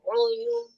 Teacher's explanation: dia bukan huruf tebal tapi memang dia si pangkal lidahnya itu lebih naik daripada harokat fathah dan kasroh